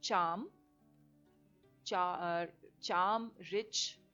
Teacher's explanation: So these are middle of the tongue touching the palate, the top palate.